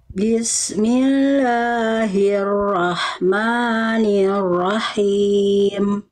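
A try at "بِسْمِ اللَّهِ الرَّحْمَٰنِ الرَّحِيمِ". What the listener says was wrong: Oke, huruf ro-nya nanti yang kedua diperjelas lagi ya, jangan sampai ro, tapi ro tetap jelas. Bismillahirrahmanirrahim.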